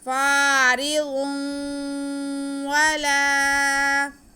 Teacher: اس کے بعد لام ہے, لام کے ساتھ الف ہے, یہ الف مدہ ہو گیا. لام کی آواز کو کھینچیں گے.